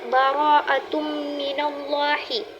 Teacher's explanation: pada kalimat baraatum baris dua berjumpa dengan mim. Maka hukum bacaan didengungkan dikarenakan mim termasuk kepada huruf idgham bighunah.